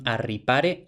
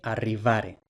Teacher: Primero, la alenición, el debilitamiento de P intervocálica en la correspondiente sonora, es decir, B. Luego esta B debe de haberse aflojado todavía más de oclusiva bilavial sonora a fricativa bilavial sonora.